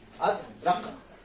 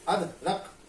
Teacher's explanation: रा पर जोर लग रहा है